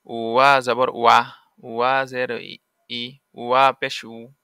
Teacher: ওয়া উচ্চারণ কেমন হবে? ওয়াও দুই ঠোঁটের মাঝের ফাঁক হতে আদায় হবে।